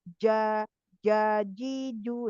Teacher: Cuman bedanya kalau jim itu jim, ja itu dia tengah lidah menyentuh langit-langit ya, langit-langit atas itu dia sempurna menempel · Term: syiddah